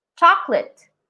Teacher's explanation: the second letter o becomes a schwa there's some kind of sound but it's not the o that